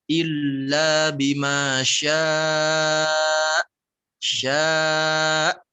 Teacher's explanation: Nabroh itu sifat menekan pada suatu huruf, khususnya di sini pada hamzah. Cara membacanya adalah dengan ditekan, dihentak. Illa bima syaa, ditekan.